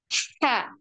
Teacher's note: Jadi H di tengah tenggorokan ya, tipis, halus ya.